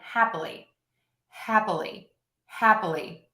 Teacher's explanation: You can hear my hap still gets the stress. My li is the middle length, and then my in the middle is super short.